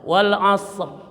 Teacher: situ ada huruf dua mati Shad dan ro ini ya jadi usahakan Shad dulu baru ro suaranya juga ya huruf yang pertama lebih keras daripada huruf yang ke kedua ya jangan W ro doang Mulah huruf yang kedua lebih rendah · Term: dua huruf mati